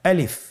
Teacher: আলিফ হরফটি মাখরাজ হলো আপনার মুখের শূন্যস্থান থেকে, গলা এবং মুখের শূন্যস্থান হতে আলিফ হরফটি উচ্চারিত হয়।